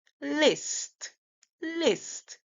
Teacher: we are not hearing the Z sound. Instead of Z, we're hearing S. So the S is making the S sound.